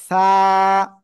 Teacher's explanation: জিব্বার আগা, উপরের এই দুই দাঁত, দুই দাঁতের আগায় লাগাবেন, লাগিয়ে হালকা বাতাস বের করে আমরা উচ্চারণ করব।